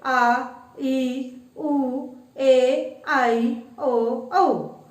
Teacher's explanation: दीर्घ स्वर, जिन स्वरों के उच्चारण में ह्रस्व के मुकाबले लगभग दुगना समय लगता है उन्हें दीर्घ स्वर कहते हैं